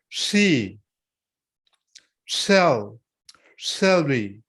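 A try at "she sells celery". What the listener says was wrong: just don't stretch out the e so long on the sheet so you're like she it's just she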